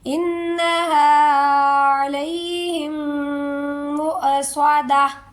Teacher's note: سادہ جھٹکا، عین کی آواز نہیں آئے گی، عین کا ساؤنڈ نہیں آئے گا، حمزہ کا ساؤنڈ نکالیں